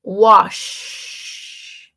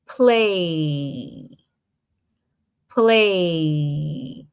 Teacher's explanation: When you say wash, nothing vibrates. When you say play, a lot vibrates